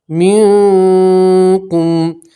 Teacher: اخفا کا مطلب ہوتا ہے کہ نون ساکن کی آواز کو ناک میں چھپا کر گنہ کے ساتھ پڑھیں گے